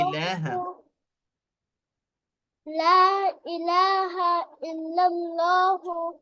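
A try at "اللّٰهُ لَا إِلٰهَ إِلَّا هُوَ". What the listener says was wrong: الا اللہ نہیں ہے بیٹا، اللہ.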